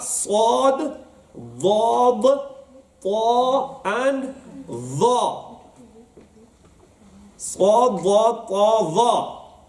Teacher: when you pronounce these letters, the middle of the tongue will grab onto the upper part of the mouth. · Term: huruf mutabiqa